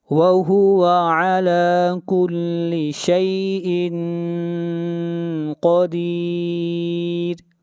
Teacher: قاف کو موٹا پڑھیں گے، قاف حروف مستعلیہ میں سے ہے اور را کو یہاں پر باریک پڑھا جائے گا